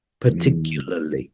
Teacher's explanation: in British English we wouldn't pronounce this R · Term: dropping this R